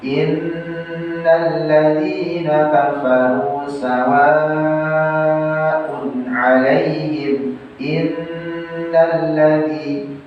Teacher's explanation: bedakan nun ditahan, lam tidak, hanya menyempurnakan saja. Kemarin kita sudah membahas rumus lam tasydid itu semua yang bertasydid itu hakikatnya dua huruf yang sama.